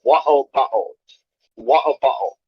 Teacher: instead of saying the T, they actually just close the back of their throat to make a similar sound. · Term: glottal stop